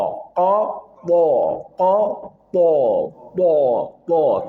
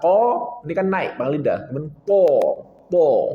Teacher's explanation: Tho dia punya sifat tafkhim, tebal dan idbaq. Tho betul-betul dia tebal.